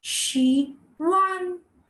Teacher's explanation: there are two tones to it the first is the third tone and then a flat tone